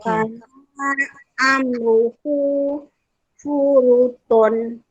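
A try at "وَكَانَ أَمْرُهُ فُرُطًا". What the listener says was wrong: Nah, jangan panjang. Wakana, kasih pendek.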